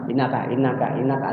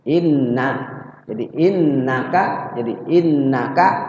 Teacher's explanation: innaka ditahannya cuma dua ketukan enggak lama-lama